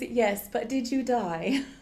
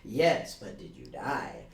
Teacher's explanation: notice she goes up with that like she's she's going up until the very last word